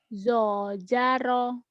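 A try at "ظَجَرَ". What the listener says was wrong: Zo ya, rapuh dulu itu ZHO ya. Kalau ini awalnya Z ya, zo. Tapi ngomongnya jangan zo-nya ke mulut.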